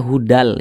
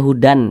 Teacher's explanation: dengan cara memasukkan kemudian juga tidak berdengung Apanya yang dimasukkan nah bunyi tanwin ini dimasukkan ke huruf lam maka ini dibaca hudal jangan dibaca Hudan tapi hudal kemudian pendek · cara bacanya itu dengan cara memasukkan kemudian juga tidak berdengung Apanya yang dimasukkan nah bunyi tanwin ini dimasukkan ke huruf lam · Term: idgham bila ghunah